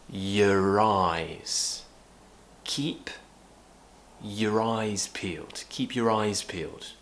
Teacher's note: we don't need to pronounce it in its true form so it becomes ya